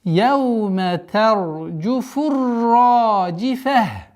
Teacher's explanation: При остановке аннулируется дамма, и та марбута переходит в букву х с сукуном. И таким образом яума тарджуфур раджифа.